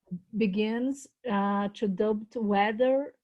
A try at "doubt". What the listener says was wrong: No, to doubt. You don't pronounce the B. To doubt.